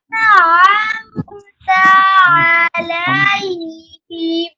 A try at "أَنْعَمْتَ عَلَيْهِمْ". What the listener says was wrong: এই যে আন বলে আপনার একটু গুন্না হয়েছে, গুন্না হবে না। নুন সাকিনের পরে দেখেন নুন সাকিন দেখছেন, নুনের উপরে সাকিন জজম। তাহলে নুন সাকিনের পরে আসছে আইন, আইন হলো ইজহারের হরফ, ইজহার মানে স্পষ্ট করা। তাহলে আমতা, আন এভাবে বলা যাবে না, আন আমতা এভাবে বলতে হবে।